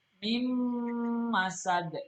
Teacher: Nun sukun ketemu dengan mim. Ini adalah idgham bigunna. Jadi bacanya adalah dengung.